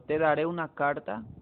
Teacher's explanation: aquí te es átona, da es átona, re es tónica, u es tónica, na es átona, car es tónica, ta es átona. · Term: sílaba tónica